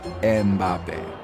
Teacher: they often find themselves inserting a third syllable to make it more pronounceable